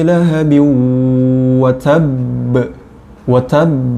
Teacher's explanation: watab ba nya dihukumi qalqalah akbar